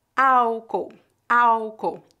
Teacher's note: letra L em final de sílabas é pronunciada como álcool álcool nós não pronunciamos o l foneticamente não há letra L nesta palavra